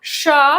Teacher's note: उष्म व्यंजन में क्या आता है आपका श जिसका उच्चारण स्थान तालु है और स्वर तंत्री के आधार पर अघोष है और प्राणवायु के आधार पर महाप्राण है